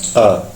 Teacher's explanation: मध्य स्वर क्या होते हैं कि जिह्वा के मध्य भाग से उच्चारित होने के कारण इन्हें मध्य स्वर कहा जाता है